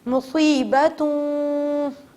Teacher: میں نے نون کو غائب نہیں کیا, اسکپ نہیں کیا, چھوڑا نہیں ہے, بلکہ نون کی آواز کو نون غنہ میں تبدیل کر دیا